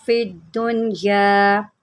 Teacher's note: दाल के ऊपर जमाव करें क्योंकि दाल के ऊपर तशदीद है